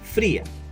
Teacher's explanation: El hiato está formado por las sílabas fri, a. La I está acentuada, por lo tanto se separa de la A. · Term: hiato acentual